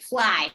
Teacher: it is fly. You don't hear any T.